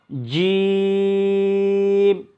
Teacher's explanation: জিহ্বার মধ্যখান তার বরাবর তালুর সঙ্গে লাগবে, শক্ত হবে আওয়াজটা